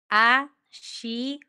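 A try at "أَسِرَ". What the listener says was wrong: Bukan. Si. Bukan she, bukan she. S biasa. S-I. Si.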